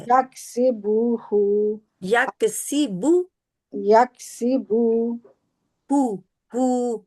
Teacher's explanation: बू को खींचना नहीं है, इसके आगे वाव नहीं है।